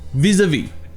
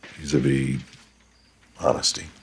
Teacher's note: ça se prononce pratiquement comme en français, à part que le A se prononce E.